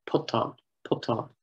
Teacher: the stress has shifted historically from the first to the second syllable and then back onto the first